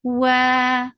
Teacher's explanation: makhraj of waw is circling your lips, make it two counts long.